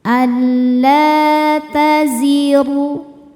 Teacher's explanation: La hukumnya mad thobi'i zohiri. Karena ada alif didahului fathah. Cara bacanya panjang dua harakat.